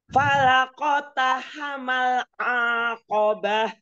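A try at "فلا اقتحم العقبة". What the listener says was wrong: Huruf ainnya enggak panjang. Aqobah. Aqobah.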